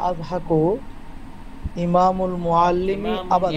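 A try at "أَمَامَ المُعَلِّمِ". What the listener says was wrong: ইমামুন না, এটা আমামাল মুআল্লিমি হবে, ই হলে তো হামজা নিচে জের হতে হয়।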